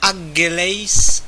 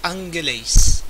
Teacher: la première occlusive gamma va se prononcer de manière nasalisée. Donc on ne dit pas angeles, mais angeles.